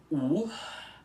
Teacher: Então, para vocês conseguirem pronunciar melhor a primeira sílaba dessa palavra, que é url, vocês farão o seguinte, vocês vão começar pronunciando o U aspirado, que é fazendo o bico do U e depois soltando o arzinho assim, U. E depois vocês vão pronunciar o L puxado logo depois dele, que é assim, L, encostando a língua nos dentes.